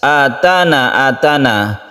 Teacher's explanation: Maka huruf-huruf halqi itu adalah salah satunya adalah hamzah. Nun mati bertemu dengan hamzah ini adalah izhar halqi. Membacanya juga dibaca izhar atau jelas.